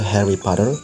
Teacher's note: Kalau Amerika itu T-nya mereka flap jadi kayak bunyi D gitu tapi tipis.